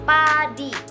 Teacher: bunyi meletup di bibir tidak bersuara